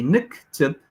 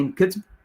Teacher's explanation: in the imperfective, we insert 2 schwas. We say nik, tib, and we don't say nkitb.